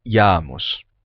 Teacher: a gente vai terminar perdendo esse som de K no meio da palavra e vai ficar Jamos.